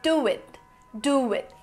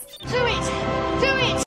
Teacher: For example, instead of saying do it, you would say do it, do it. So there is a W sound which somehow got into this phrase.